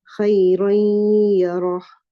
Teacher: you can hear the sound of the gunna of the noon in khayran. It's merged into the ya, and you can hear the gunna. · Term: idgham naqis